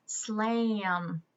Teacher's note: here in America, especially in the South, we kind of change the sound of our A when there's an M after it